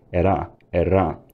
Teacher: R is pronounced with a tap or trill, era, era, which is widespread in modern Scots, and that's probably because a trill was still common in southern England at this point.